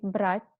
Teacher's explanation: it's like a very very small e in the end of the word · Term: soft